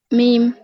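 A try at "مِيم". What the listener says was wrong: মিম বলা যাবে না, হ্যাঁ টেনে পড়তে হবে। মিম। মিম কত আলিফ টেনে পড়তে হবে? চার আলিফ।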